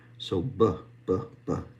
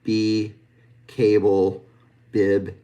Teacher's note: That's a stop. And this bilabial stop is actually voiced. So we do actually engage our our vocal cords here.